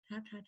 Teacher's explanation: It's that light relationship between the tip of the tongue and the alveolar ridge.